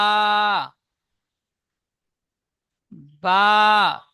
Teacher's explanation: তাহলে ভিজা জায়গায় থেকে দুই ঠোঁটের ভিজা অংশ, নিচের ঠোঁটের ভিজা অংশ উপর ঠোঁটের ভিজা অংশ একসাথে মিলিত হয়ে উচ্চারিত হয় বা। বা, দুই ঠোঁটের ভিজা অংশ হতে উচ্চারিত হয় বা